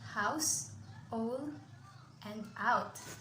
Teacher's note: A diphthongus is composed of 2 vowel sounds joined in 1 syllable to form 1 speech sounds.